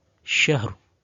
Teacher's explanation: membaca samar huruf terakhirnya, juga mengenai status tafkhim atau tarqiqnya ra. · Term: ikhfa bil ma'nal jadid